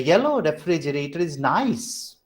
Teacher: earlier yellow has secondary stress and nice has primary stress